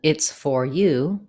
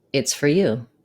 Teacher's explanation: Usually when speaking, for is reduced to fur.